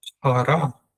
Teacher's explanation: The P is strong for two reasons. There's a kamat, an open ah sound, but most importantly, there's a dagesh, so it's a double P sound.